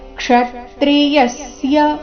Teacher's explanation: ಕ್ಷ ಮತ್ತೆ ಯ ಮೇಲೆ ಆಘಾತ